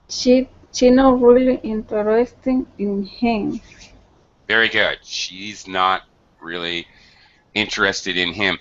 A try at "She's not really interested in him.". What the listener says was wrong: She's not really interested in him. make sure you're pronouncing the z. She's not. It's the contracted or abbreviated form of she is.